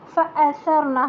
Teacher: صبحا، صاد بھی موٹا ہے، صبحا، آگے فأثرن به نقعا، فأثرن، سا کو نرم پڑھنا ہے، حمزہ کو ایک دم اسٹریٹ ، فأثرن، حمزہ اسٹریٹ الگ سے آواز نکال کے، اور سا